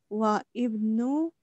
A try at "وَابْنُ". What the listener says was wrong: Wabnu, alif is silent. When there is a word before alif, alif becomes silent. Wabnu.